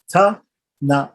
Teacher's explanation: the N, which is also dental, right, which is also pronounced with the tongue and the teeth